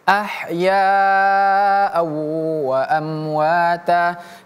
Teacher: Di sini ahyanya kita baca panjang 6 harokat. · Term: mad wajib muttasil